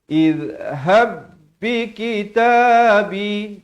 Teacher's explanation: Izhab, ya, di sini zal di hujung lidah